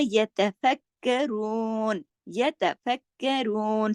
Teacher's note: अला जुनूबिहिम व यतफक्करून, यतफक्करून, सब बारीक लेटर हैं सिवाय रू के, बाकी सब बारीक। और फक का जो है काफ पे तशदीद है, सख्ती से जोड़ के पढ़ा जाएगा